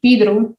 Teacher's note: when a quechua speaker pronounces it it will be pedro because they don't have the e and o